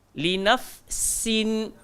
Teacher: Huruf sin pula hujung lidah langgar belakang gigi bawah.